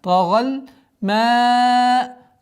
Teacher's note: Долгота в размере 4 огласовок фатхи над буквой ма.